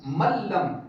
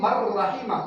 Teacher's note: لام اور را کے اندر ہمیں غنہ نہیں کرنا تھا اس لیے ہم نے میم کو سیدھا لام اور را کے ساتھ ملایا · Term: بغیر غنہ کے ادغام